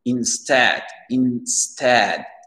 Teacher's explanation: L'accent tonique, il est sur le S-T-E-A-D et c'est un son E ici.